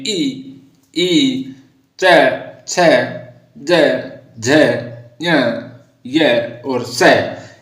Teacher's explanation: या इसकी ध्वनि है जैसे च वर्ग में ई, च, छ, ज, झ, ञ, य और स। यानी ये जैसे हम बोलते हैं तो हमारी जो जीभ है वो तालु से स्पर्श करती है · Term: तालव्य